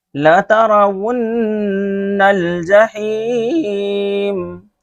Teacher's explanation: دیکھیں یہاں بھی ون ہے، ان نہیں پڑھنا ہے، یعنی حمزہ سے نہیں پڑھنا ہے، واو سے پڑھنا ہے. لَتَرَوُنَّ، ان نہیں پڑھنا ہے، ون پڑھنا ہے. · یہاں غور سے پڑھنا، دیکھیے لا ترون نہیں پڑھنا ہے، ان. بہت سارے لوگ واو کی آواز کو ان بولتے ہیں، ان نہیں بولنا، ون بولنا، وی سے